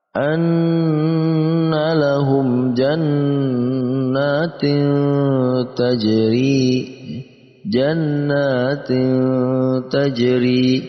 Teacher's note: Yaitu dengan menambahkan eng antara tanwin dan ta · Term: ikhfa